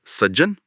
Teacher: ऐसे ही सत प्लस जन। ज भारी है। वो त को खा जाता है